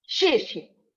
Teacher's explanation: That's an abrupt falling tone.